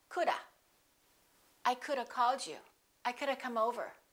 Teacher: When we have the word have, for example, could have been, you have learned that we say could have been, we reduce it to of. If you speak more casually, you can say coulda. You just change the V to a, coulda.